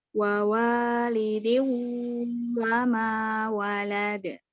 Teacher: Cara membacanya dileburkan ke huruf waw dengan dengung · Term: Idgham bi gunnah